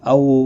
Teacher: औ वाउलीन है, थोड़ा नरमी के साथ खींच कर पढ़ेंगे